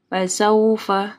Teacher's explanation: واو ساکن سے پہلے سین کے اوپر جو ہے زبر ہے، یہاں پہ مدلین آ رہی ہے